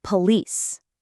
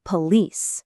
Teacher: the stress should actually fall on the second syllable. And that first vowel becomes a really soft unstressed sound. So, the correct pronunciation is police.